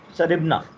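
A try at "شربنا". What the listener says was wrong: हाँ, अब देखिए, शरिबना यहाँ पर ना को लंबा करेंगे, अलिफ के साथ आएगा, ठीक है, शरिबना।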